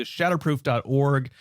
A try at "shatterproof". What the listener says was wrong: Shatterproof. Sounded like you were saying shadow.